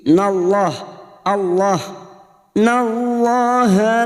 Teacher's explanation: Nun yang bertasdid gunna musyaddadah kita dengungkan selama tiga harakat Innallaha lam jalalah yang sebelumnya fathah kita baca tafkim